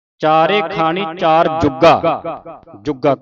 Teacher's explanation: ਕੱਸ ਕੇ ਬੋਲਣਾ ਭਾਵ ਭਾਰਾ ਬੋਲਣਾ ਇਹਨੂੰ ਅਧਕ ਲਾ ਕੇ ਪੜਨਾ